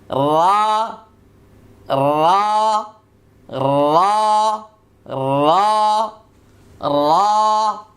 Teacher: লক্ষ্য করুন, এবার জিহ্বার 10 নম্বর মাখরাজ জিহ্বার আগার পিঠ তার বরাবর উপরের তালুর সঙ্গে লাগিয়ে একটি হরফ উচ্চারিত হবে। এটা নুনের চেয়ে একটু ভিন্ন।